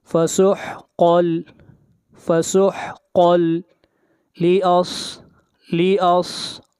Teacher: تنوین کے بعد حروف یرملون میں سے لام ہے تو ادغام بلا غنہ ہوگا